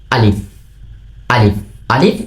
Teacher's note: এই আলিফ শব্দটি উচ্চারিত হয় মুখের কালি জায়গা হইতে। এই মুখের যে কালি জায়গা আছে ওইখান থেকে উচ্চারিত হয় আলিফ।